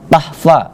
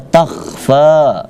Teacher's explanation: Nah, jangan dibaca tahfa. Nah, karena itu huruf kha, maka ada semacam tekanan di dalam tenggorokan, itu dibaca takhfa.